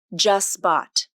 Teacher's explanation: The middle consonant is a voiceless T sound, and it disappears completely. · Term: rule of three